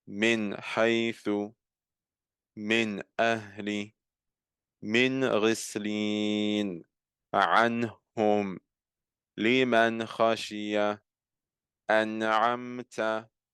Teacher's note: we had a Noon with a Sukoon on it, followed by a throat letter, and thus we clearly pronounced it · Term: al-idhar